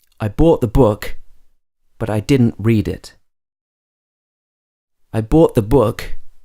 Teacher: in the middle of the sentence I haven't finished the phrase and therefore my pitch goes up and then at the end of the sentence my voice will lower in pitch